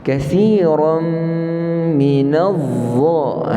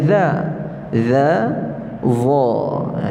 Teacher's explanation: ini huruf tebal za, dan ianya keluar daripada hujung lidah kita. Kemudian pangkal lidah kita yang dekat dengan kita punya anak tekak itu kita kena angkat sikit. Sebab tempat dia sama dengan za, za, za, tebal.